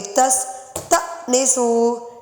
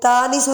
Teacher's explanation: حمزہ ساکن جھٹکا دیں گے. تستأنسوا، تانسوا نہیں پڑھ سکتے.